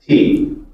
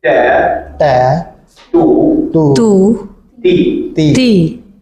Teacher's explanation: the English T has some aspiration or puff of air, but the Arabic one, no. It is more like a solid T sound.